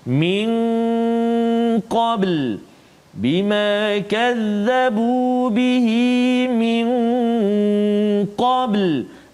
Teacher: nun mati bertemu dengan qaf, dengung 2 harakat